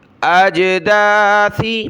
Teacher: جیم پر قلقلہ ہوا